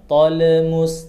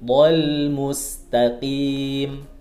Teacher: mematikan huruf lam itu naikkan ujung lidahnya ke langit-langit bagian depan. Dhal mustaqim, jangan dipantulkan, bukan tol mus, tapi dhal mustaqim.